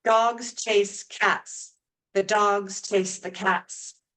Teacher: the stress syllables are said at about regular intervals the same amount of time between the stress syllables so the unstressed syllables get shortened to fit in this Rhythm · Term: stress time language